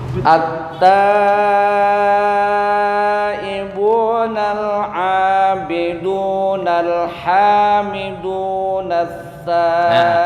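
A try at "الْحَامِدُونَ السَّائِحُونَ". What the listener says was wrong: asa bukan tha. Nah, ini masih kebalik nih antara sa sama tha. Sin dengan tha jangan kebalik ya.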